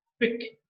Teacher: articulations velar and that manner of articulation is elusive wheeler because the back of the tongue touches the soft palate or the vida prosit because there is a closure this total